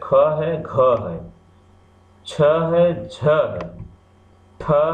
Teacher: जब महाप्राण वर्णों को हम बोलते हैं तो मुख से हवा जो है अधिक मात्रा में निकलती है। इनको बोलने में अधिक श्रम करना, जब अधिक हवा निकलेगी तो अधिक श्रम भी होगा, तो इन्हें महाप्राण कहते हैं।